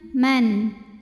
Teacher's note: nun sukun ketemu huruf halqi atau huruf tenggorokan yaitu hamzah, maka nun dibaca jelas. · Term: izhar halqi